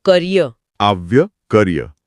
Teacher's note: શબ્દને છેડે આવતો ઈ સ્વર હોય ને એ ઘણીવાર ય જેવો સંભળાય